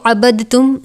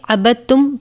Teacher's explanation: اس میں اب دال ساکن ہے، با متحرک ہے اور تا مشدد ہے، تو ہم اس میں سے دال کو چھوڑیں گے. ہم اس کو عبدتم نہیں پڑھیں گے بلکہ عبدتم پڑھیں گے.